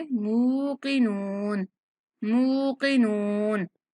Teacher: यहाँ मुंह पर झटके के साथ नहीं पढ़ना, मुंह की नून ऐसे करके नहीं पढ़ेंगे। मूकिनून, मीम को नरमी वाली आवाज के साथ पढ़ेंगे